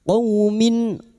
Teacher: qaw fathah bertemu waw sukun kita lunakkan huruf lin